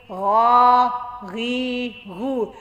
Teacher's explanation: गैन को थोड़ा सा मोटा करके पढ़ना है और गा वाज़े गले से निकलना चाहिए